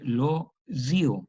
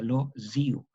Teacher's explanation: Este fonema es parecido al italiano, ¿no? Que es una Z sonora. El italiano, por ejemplo, el tío, el italiano dice lo zio, y se queda así con esa Z, lo zio.